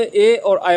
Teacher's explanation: कंठ तालु में ए और ऐ बनता है